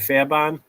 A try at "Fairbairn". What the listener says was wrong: But it's just that you're Boston, so it's Fairbairn. There's no R.